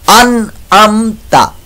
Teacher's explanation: आनी नहीं है अन अमता, इजहार का कायदा लग रहा है, नून साकिन के बाद आइन हरूफ हलकी में से आ गया इजहार का कायदा